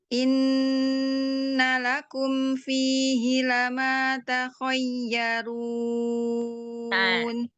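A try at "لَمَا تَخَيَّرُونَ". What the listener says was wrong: Ya, coba takhayya tidak ke hidung. Takhayyarun. Innalakum, kemudian jelaskan lakum. Lama, biasa saja. Lama takhayyarun.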